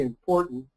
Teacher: The M came about because of the P, important. It's an assimilation there's a phonological mouth movement going on, but IM means inner, into.